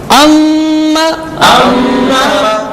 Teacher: غنہ کیا، ناک میں آواز لے گئے